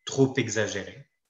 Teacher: Le « p » est muet en général, il produit le son « p » quand il y a une liaison